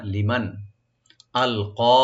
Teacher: আর নুন সাকিন এখানে জাহার হবে, গুন্না হবে না , লিমান আলকা, আলকা হামজাকে রাইট দিবেন, আর কফ এখানে ডিপ